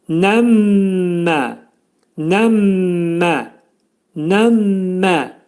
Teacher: Burada yenə də mim hərfi ğunnə olacaq. Burunda 2 saniyə müddətində sıxılacaq, amma uzadılmayacaq.